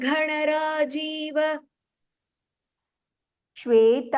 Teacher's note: the bra and gha both are mahapranah there